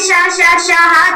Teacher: जिन वर्णों के उच्चारण में हवा मुख से रगड़ खाती हुई धीरे धीरे बाहर निकलती है और उन्हें हम ऊष्म संघर्षी व्यंजन कहते हैं। · जब आप श, ह को बोलेंगे तो एक ऊष्म ध्वनि आती है, यानी कि मुख से ऊष्मा निकलती है। या यूं कहें कि ये मुख से बाहर निकलते हैं शा शा शाह, तो एक ऊष्म ध्वनि आती है। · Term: ऊष्म व्यंजन